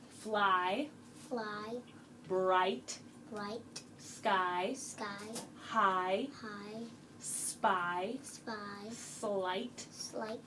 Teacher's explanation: my mouth kind of goes down a little bit when I say that eye sound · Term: long eye